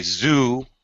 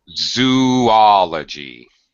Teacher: when we say zoo, it's one vowel sound. Ooh. When we say zoology, we break the two vowels, the two O's, into two separate vowel sounds.